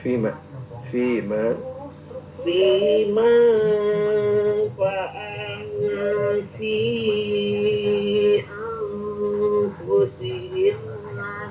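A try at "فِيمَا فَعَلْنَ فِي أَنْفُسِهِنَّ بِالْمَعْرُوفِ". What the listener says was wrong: Nun tasdidnya itu gunanya ditambah dengungnya ya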